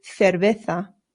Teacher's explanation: Remember, the C's in Spanish make a th sound, but the Z's do as well.